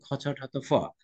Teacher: আর বাতাসের চাপ যখন বেশি আছে তখন তার নাম হয়েছে মহাপ্রাণ